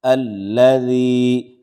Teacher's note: ذال نرمی سے ادا کریں گے، یعنی ثناء علیہ، یعنی سامنے کے جو اوپر والے سنٹر کے دانت ہیں اس کے کنارے سے زبان کی نوک ہلکی سی لگے گی۔